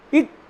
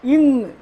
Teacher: இக் இங் இடம் ஒன்று, ஆனால் ஒலி வல்லொலியும் மெல்லொலியுமாக இருக்கிறது.